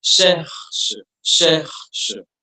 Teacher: The C comes from the back of your tongue. It has a more of a vibrating, gargling sort of sound.